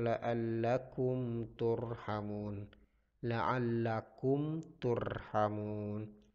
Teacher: hukum bacaannya adalah izhar syafawi la'allakum turn apa eeezzz hard syafawi karena mim sukun bertemu dengan huruf ta cara membacanya dibaca jelas